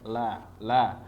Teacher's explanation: ujung lidah posisinya di atas langit-langit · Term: lam